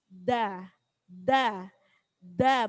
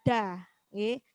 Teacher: memantul tapi tidak pakai e tidak pakai Hamzah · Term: Qalqalah